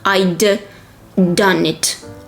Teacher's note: we have two consonants, in this case, same consonant, D, we just stress it a little bit more, but we do not pronounce it twice.